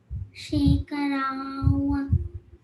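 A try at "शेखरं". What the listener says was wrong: Shekharam. Kha should come. Shekharam.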